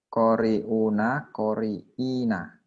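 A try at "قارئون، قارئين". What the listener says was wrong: Mumtaz,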